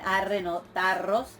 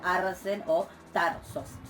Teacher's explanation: Luego, un caso de asimilación, que es la vibrante, la ro en contacto con la sibilante, que da como resultado una geminada, o sea, doble ro, en donde lo que sucedió es que la ro toma el punto de articulación de la sibilante.